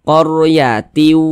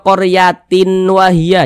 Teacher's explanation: bunyi tanwin ini dimasukkan ke huruf wau melebur ke huruf wau kita baca qoryati Jangan dibaca qoryatin wahya jangan tapi didengungkan diunahkan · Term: idgham bhunah